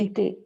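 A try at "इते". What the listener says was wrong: Ite. Not ate, it is ite. Ite.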